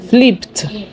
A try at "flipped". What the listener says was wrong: There's no M there.